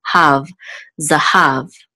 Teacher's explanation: so we know that the accent is on the last syllable